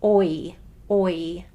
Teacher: It's a very drastic diphthong, meaning the sound of it changes from the beginning of it to the end of it in a pretty significant way. We have your lips starting with O and it ends with E, oi, oi. It's a very drastic diphthong.